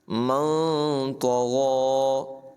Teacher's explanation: طا اور غین دونوں کو پر ادا کرنا ہے · فَأَمَّا مَن طَغَىٰ، نون ساکن کے بعد طا حروف اخفا میں سے ہے، نون ساکن میں اخفا ہوگا، یعنی اخفا کریں گے، غنہ کریں گے، ناک میں آواز کو چھپائیں گے، نون ساکن کو ظاہر کر کے نہیں پڑھیں گے، یعنی من نہیں پڑھیں گے بلکہ من اس انداز میں پڑھیں گے۔